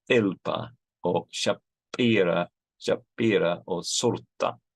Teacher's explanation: you have in Urmi you have a da, which is an unaspirated T · the Assyrian Christians of Urmi have these unaspirated stops